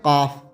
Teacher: इसमें जबान का पिछला हिस्सा और कोआ मिलकर हवा को रोकते हैं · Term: लती